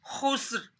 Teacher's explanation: سین کی سیٹی نکالنی ہے۔ خا حروف مستعلیہ میں سے ہے، اس کو موٹا بھی پڑھنا ہے